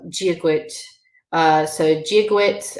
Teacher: Jia is the D with the J sound because it's next to an AI